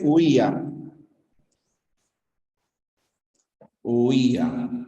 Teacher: En la palabra huía aparecen los dos. Diptongo, la U con la I, y hiato acentual, la I con la A.